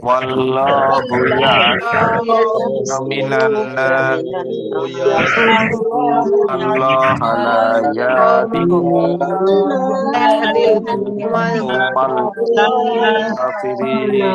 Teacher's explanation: ওয়াল্লাহু আল্লাহ শব্দের লাম মোটা হবে, একালিফ টান হবে। ইয়াসিমুকা মিনান নাস, তো আমরা থেমে পড়লে তিন আলিফ টান হবে, ওয়াজিব গুন্না রয়েছে এখানে।